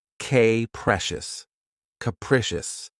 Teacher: Keep in mind that the first syllable has that schwa sound.